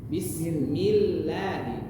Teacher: lam yang tipis, datar saja, tidak ada pergerakan lidahnya.